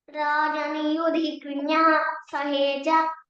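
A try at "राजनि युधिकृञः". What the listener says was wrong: again don't stress there yudhi kriyah it is not krinyah yudhi kriyah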